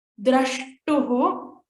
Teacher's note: Dra should be stressed upon, just like pra we saw in the previous sutras.